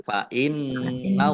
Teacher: nun tasdid dibaca gunnah atau mendengung ditahan 2 harokat